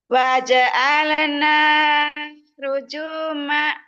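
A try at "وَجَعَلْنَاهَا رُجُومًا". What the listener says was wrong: Ya, haknya gimana? Haknya diulang. Waja'alnaha Waja'alnaha rujuma.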